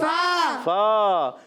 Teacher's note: اوپر والے دانتوں کے کنارے، نیچے والے ہونٹ کے تر حصے سے جب لگتے ہیں تو ادا ہوتا ہے فا